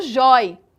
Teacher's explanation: Percebam que a sílaba tônica, ela é a penúltima sílaba, é o jói.